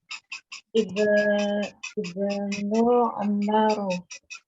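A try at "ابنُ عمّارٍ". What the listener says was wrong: Kasrah tanwin Bu. Ibnu Ammarin.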